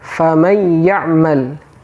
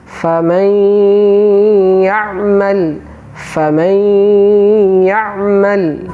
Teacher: Sebelum masuk ke huruf ya, terlebih dahulu kita tahan, kita berikan gunnah.